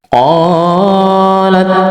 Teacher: mad tabi'i, fathah di depannya ada alif. Jadi mad tabi'i panjangnya 2 harokat